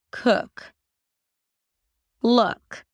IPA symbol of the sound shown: ʊ